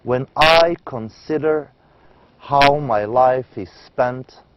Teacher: the poem are in the iambic pentameter in this metric pattern a line has five pairs of unstressed and stressed syllables the total of the syllables in every line is 10 syllables